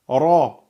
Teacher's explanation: Regardez bien le point de sortie, le point de contact de la langue, il est au niveau des incisives supérieures.